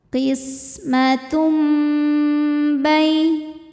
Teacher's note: Cara bacanya tanwin diganti bunyi mim, kemudian dengungkan. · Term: iqlab